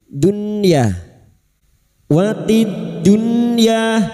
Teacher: Nun sukun bertemu ya, idhar wajib, ya harus jelas membacanya tanpa mendengung.